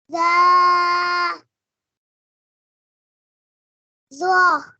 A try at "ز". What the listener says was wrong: کھینچے تھوڑا سا.